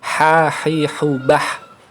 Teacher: Tenggorokan tengah itu ada tempat keluarnya huruf ain dan ha.